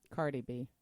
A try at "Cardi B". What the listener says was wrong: It's Cardi. like Bacardi. No, you said Carly. It's Cardi like Bacardi.